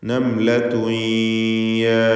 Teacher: തൻവീനിനെ ഇദ്ഗാം ബിഗുന്ന നാഖിസ് നൽകി യായിലേക്ക് ലയിപ്പിച്ച് മണിക്കണം.